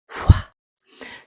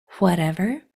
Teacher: that WH sound, which is a blowing sound. There's no voice, only air. It sounds like wha.